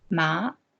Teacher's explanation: The second tone is a rising tone, ma